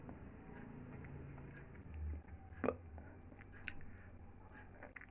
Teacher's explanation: Place of articulation, two lips. Manner of articulation, plosive. And quality is voiceless. Hence, this sound is called bilabial voiceless plosive.